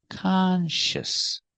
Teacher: sound H sh and the S sound s together consious conscious put the stress on the first syllable